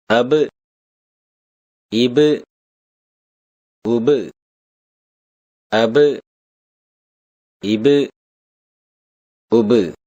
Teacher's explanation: ப இரு உதடுகளின் ஈரப்பகுதியிலிருந்து ஒலிக்கப் பெறுகின்றது.